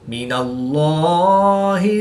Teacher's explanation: लाम से पहले नून पर ज़बर है तो इसलिए इस लाम को पुर यानी मोटा पढ़ेंगे